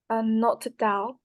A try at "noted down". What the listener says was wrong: So you have to pronounce the D. Okay, that's what I'm trying to get everyone to do. Noted down, noted down, noted down, noted down.